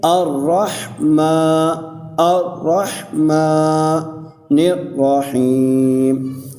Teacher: اور آگے میم ہے، میم کے اوپر کھڑی زبر ہے، میم کے اوپر کھڑی زبر آنے کی وجہ سے ہم اس کو ایک الف کی مقدار کھینچ کے پڑھیں گے